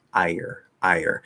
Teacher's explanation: We can tell it's not R colored because they sound kind of separate. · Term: a small Y